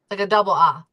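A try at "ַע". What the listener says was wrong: Uh no, no. Okay, because for you the ayin is silent, so it's just ah and then silence.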